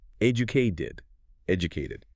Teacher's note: If the base word ends in a t or a d sound like educate, then the e ending becomes a distinctly pronounced extra syllable.